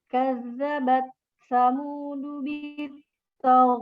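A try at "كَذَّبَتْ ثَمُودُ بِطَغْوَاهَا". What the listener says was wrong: Jangan togwaha. Tog. Ngalir dia suaranya. Bitagwaha.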